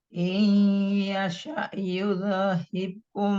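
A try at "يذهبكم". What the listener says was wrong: Hati-hati Bu, mantul. Jangan seperti itu. Yudhibukum langsung ditahan.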